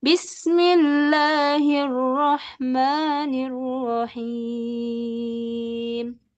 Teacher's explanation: Bismillahi, Allahnya jangan terlalu panjang, kemudian Rahmani, ma-nya jangan terlalu panjang juga. Kemudian Rahimnya diturunkan.